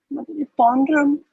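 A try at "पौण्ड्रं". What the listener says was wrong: Here, you're adding a A. You're adding a A over here.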